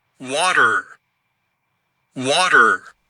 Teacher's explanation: On a en plus le T qui se transforme en son D, mais vous entendez que c'est un son schwa.